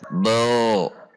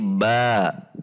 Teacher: tidak boleh dibaca bo, tapi ba. Ba rileks dan tipis.